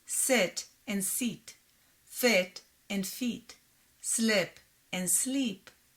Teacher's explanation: In Hebrew, the words sit and seat, fit and feet, slip and sleep sound the same.